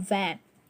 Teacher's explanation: the word then while giving emphasis to the um consonant v you can feel an actual vibration in your throat that means that the word van or the consonant v is a voiced one